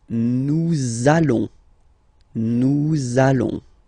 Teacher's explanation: you want to make this beautiful and little liaison, so this little link between the words, so it does mean that you will have to pronounce this z sound